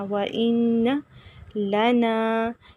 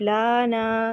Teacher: کریں گے لیکن لمبا نہیں کرنا، وَإِنَّ نہیں پڑھنا، وَإِنَّ لَنَا لام لمبا نہیں کریں گے لیکن نون لمبا کریں گے کیونکہ نون کے آگے خالی الف، لانا یہ غلط ہے، وَإِنَّ